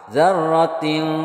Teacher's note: Perhatikan di sini, ini juga ada tanwin bertemu shin. Ini namanya ikhfa hakiki. Jadi bacaannya samar disertai berdengung.